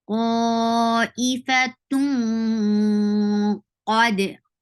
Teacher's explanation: And qaf is heavy, so your ikhfa is heavy. How you are creating heavy ikhfa? By lifting your tongue up.